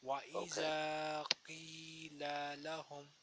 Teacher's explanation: So I have elongated only alif and ya. All other are kept short.